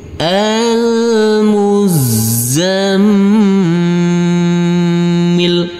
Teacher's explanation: Huruf mim yang bertasdid ini, karena ini adalah bacaan ghunnah, maka huruf mim ini kita tekan, kita tahan, serta kita dengungkan.